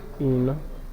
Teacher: the word given to us, interrogate, is a verb, and we said the rule governing this is that the second syllable is stressed. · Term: second syllable stressed